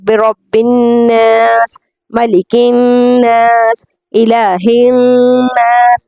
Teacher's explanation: تو یہ نون مشدد ہے جہاں پر غنگناہٹ کی آواز آتی ہے ناک سے